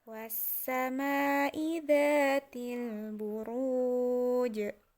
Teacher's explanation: Itu ru ketemu dengan waw sukun dan terakhirnya itu jim, maka kita akan mewakafkan jimnya itu menjadi mati dan wawunya ini kita dibaca panjang